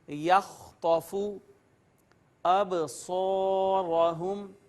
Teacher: یہ الف مدہ آ گیا ہے ما قبل مفتوح، اس کے بعد را کو پر کر کے پڑھیں گے